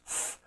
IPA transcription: θ